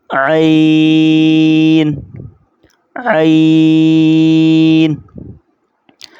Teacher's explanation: عین، گلے سے نکلے گا زور لگا کر